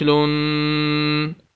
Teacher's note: لام دو پیش لن، غنہ مینس ناک میں آواز لے کر جانی ہے